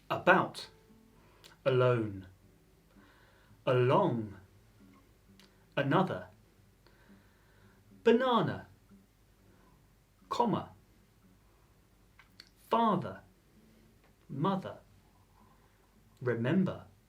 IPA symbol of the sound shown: ə